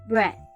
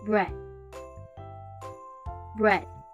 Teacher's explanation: instead of ending it with the d sounds, we end it with the th sound. Straight placing your tongue at the top of your teeth.